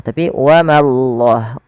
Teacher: Pada lafal Allah bila didahului dengan fathah maka Allahnya tebal. Wa mallah, tapi ma jangan ikut tebal. Jangan wa mallah, tapi wa mallah, ma tipis, Allahnya tebal.